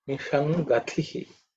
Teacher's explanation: The sh is cerebral, and this thi is the second of the second letter in the tha varga, so it has to be aspirated.